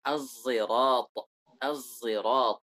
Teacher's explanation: Sad yang dicampurkan dengan suara zai. Yang diismamkan.